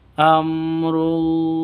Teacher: mim mati bertemu dengan ro jelas terang izhar syafawi